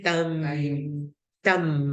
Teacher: Tukar terus, tak ada bunyi tan, dia akan tukar jadi tam. Tukar pada bunyi mim yang nipis ya, tam. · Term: iklab